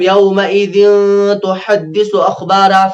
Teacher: یہاں پر اخفا ہوگا کیونکہ تنوین کے بعد ہے تا حرف اخفا میں سے